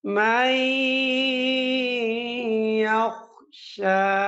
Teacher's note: মিম ইয়াজবর মাই পড়ার সময় ১ আলিফ পরিমাণ সময় নাকের ভেতরে আওয়াজ দিতে হবে